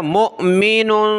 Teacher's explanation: انثى وهو مؤمن، حمزہ ساکنہ جھٹکا دیا